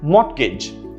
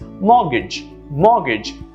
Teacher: notice the absence of t or r sounds